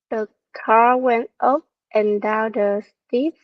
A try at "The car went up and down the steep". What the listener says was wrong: Yeah, so it is this word went up and down. Just now I didn't hear the per sound really clear.